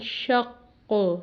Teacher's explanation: Secondly یہ حروف قلقلہ میں سے، حروف قلقلہ جس وقت ساکن ہوتے ہیں تو وہ قلقلہ یعنی ہلا کے تھوڑا سا پڑھا جاتا ہے، تو شق آواز اس مخرج سے ادا ہو رہی ہے، اسی پہ جا کے دوبارہ ٹکراتی ہے۔